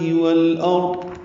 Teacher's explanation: والارض میں لام ساکن پہ اظہار قمری ہے